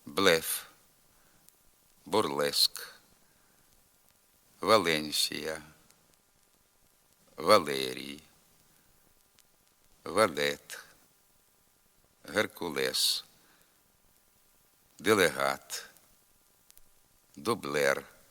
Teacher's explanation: походження а також у власних особових іменах прізвищах та географічних назвах перед е вимовляється лише м'якший варіант нем'якого л тобто звук середній між твердим і м'яким